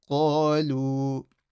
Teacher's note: the alif stretches the qaf, qa, and then you have the waw sakin stretching the dhamma before. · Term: maddul asli